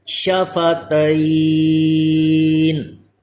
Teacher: شفتین، وقف کی حالت میں شفتین، یہ یا جو ہے اس وقت یہاں پہ یا لین تھا، لیکن جب وقف کریں گے تو اس وقت یہ عارضی سکون آ گیا حروف لین کے بعد، اس لیے یہ مد لین عارض